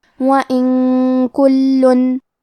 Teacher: اخفاء کا معنی ہے چھپا دینا، تو ہم نون ساکن کو چھپاتے ہوئے اور غنہ کے ساتھ یہ حکم کو ادا کریں گے